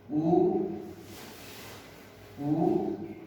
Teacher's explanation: जिन ध्वनियों का उच्चारण करने से अपने होठ एकदम गोल हो जाते हैं उनको कहते हैं वृत्ताकार